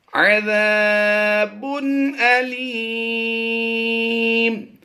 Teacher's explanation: دو پیش کی تنوین کو ہم نے وقف میں جزم سے بدل دینا ہے تو یہ بن جائے گا علیم.